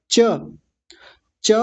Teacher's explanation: च बोलने में जीभ हमारी जहां जाकर लगती है उसी को तालू कहा जाता है ऊपर वाले दांतों के भीतर की ओर जो उभरा हुआ हिस्सा